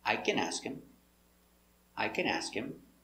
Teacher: putting the stress on the first word only